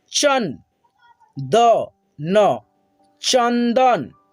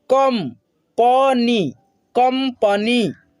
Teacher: इस अनुस्वार को हम लोग आधा न और आधा म के रूप में उच्चारण करते हैं। जैसे यहाँ पे देखिए च है और च के आगे लगा है एक अनुस्वार, तो इसको पढ़ेंगे चन द न चंदन।